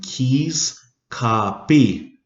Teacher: the k's are actually set in the front of the mouth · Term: k sound